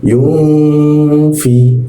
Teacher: huruf nun mati ketika bertemu dengan fa itu didengungkan yung didengungkan dan ditahan.